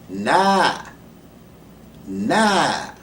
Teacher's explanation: So this Nun that begins the word Nas, that Nun is given expression because of the vowel Fatha, the open A.